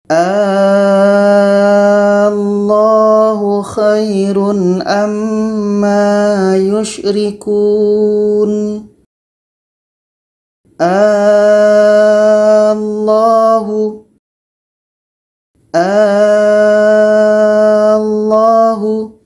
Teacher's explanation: jadi kita panjangkan dulu 6 harkat baru disambut dengan tasydid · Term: mad badal, mak badal